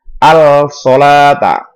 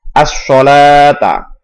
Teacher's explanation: Cara membacanya dimasukkan. As-sholata, tidak al-sholata. Jadi langsung masuk ke shadnya. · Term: idgham syamsi